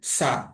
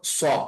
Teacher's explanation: সিনের উচ্চারণটা পাতলা কিন্তু সদ জবর স এটা একটু মোটা করে উচ্চারণ হবে